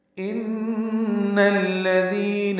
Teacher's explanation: ان میں نون مشدد ہے، یہ غنہ ہے، اس کی زبر کو الذین کے لام سے ملانا ہے، دال نرمی سے پڑھنا ہے، 2 حرکات لمبا کرنا ہے.